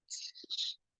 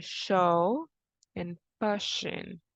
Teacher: This one is a voiceless palatal fricative, so it sounds sh. And some examples are show and pushing.